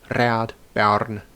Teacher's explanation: We have no secure way of knowing how R was said, but most people, myself included, would roll it or tap it